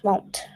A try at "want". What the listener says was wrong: Yeah, it's not won't. Won't means will not, it's want.